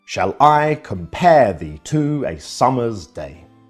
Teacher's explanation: This pattern or grouping of stresses, unstressed, followed by a stressed syllable, is called an iamb.